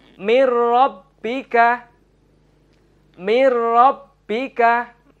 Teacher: Nun sukun bertemu dengan huruf ro adalah bacaan idgham bila gunnah. Cara membacanya yaitu meleburkan huruf nun ke dalam huruf ro.